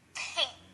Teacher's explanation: you should have felt the air coming onto your hand because that is what creates a p sound okay now that's pretty easy when you say a word like